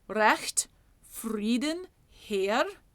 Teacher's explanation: We will use the flipped R that is closer to Southern German just because it sings better.